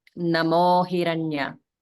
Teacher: sometimes that namaha changes to namo, like namo hiranya. So we don't say namaha hiranya, right?